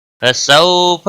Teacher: واولین ہے، تھوڑا نرمی کے ساتھ کھینچ کر پڑھیں گے، ہا کو کھینچنا نہیں۔